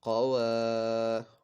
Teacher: الف سے پہلے زبر ہے، الف مدہ ہو رہا ہے، اس کو ایک الف دو حرکات کے برابر کھینچ کر پڑھنا ہے